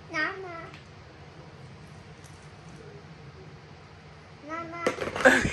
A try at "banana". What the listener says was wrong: It's banana, not Nana. It's banana. You should also say the B. Banana.